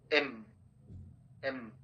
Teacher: Your upper lip and lower lip will close together, এম, এম, দুটো লিপ কিন্তু close আছে, আর সাউন্ডটা এম, এম, এভাবে।